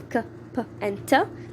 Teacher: when they are in the beginning it comes out with a little puff of air so that this puff of air is aspiration this is what